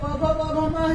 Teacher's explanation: वे ओठ से बोले जाते हैं, इसलिए उनको ओष्ठ कहा जाता है